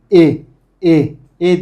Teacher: E ile İ arası bir sesi çıkıyor